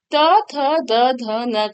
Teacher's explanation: त, थ, द, ध, न का जो उच्चारण स्थान है वो आपका दंत है